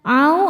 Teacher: sebab ada wau sukun sebelumnya baris fathah. Dibacanya lembut atau lunak. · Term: harfulin